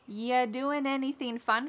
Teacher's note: we link together doing because we're going to drop the G. It ends with the sound n, the N sound.